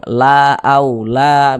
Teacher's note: sehingganya huruf lam ini kita baca panjang la a la begitu kita panjangkan dua harakat atau tadi e kira-kira temponya dua ketukan